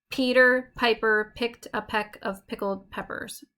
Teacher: this metrical foot is made up of a stressed syllable followed by an unstressed syllable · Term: trochee